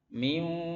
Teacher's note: masuk nunnya masuk ke waw tapi dengan gunah